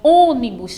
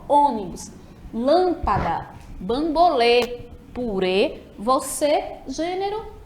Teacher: Já o circunflexo, ele vai ter ali um som mais fechado nas vogais